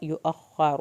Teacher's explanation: रा आखिर में पुर करके पढ़ेंगे